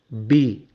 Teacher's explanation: உங்களுக்கு 2 உதடுகள் வந்து ஒட்டுது. பி, இந்த உதடுகள் ஒட்டாமல் பி சொல்லவே முடியாது.